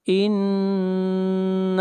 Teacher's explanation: ان نون کے اوپر شد ہے، غنہ ہوگا، نون کو کھینچ کر پڑھیں گے ایک الف کے برابر، مد اصلی ہے۔